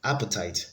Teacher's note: appetite has the stress on the first syllable